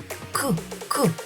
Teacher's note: К вимовляється твердо. Отже, це твердий приголосний звук.